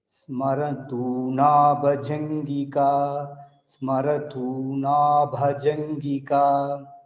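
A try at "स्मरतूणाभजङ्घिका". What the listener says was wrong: That Bhajanthika, Ghi, Mahaprana. Bhajanthika. Bhajanthika, only that Gha you have to little observe, otherwise it is good.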